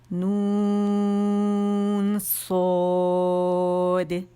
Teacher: اچھا، اب نون جو ہے باریک ہے، جب اسے کھینچا نون پہ ساکن پہ اس کی آواز ختم ہوئی، اس کے ہجوں میں جو ہے وہ نون ساکن آخر میں آتا ہے، جب وہ ختم ہوا اس کو ایک کاؤنٹ دیا، ٹھیک ہے۔ آواز جاری نہیں رکھیں گے نون کی، ایک کاؤنٹ دینا ہے، اور پھر صاد کا مخرج پکڑنا ہے، پاز نہیں آئے گا بیچ میں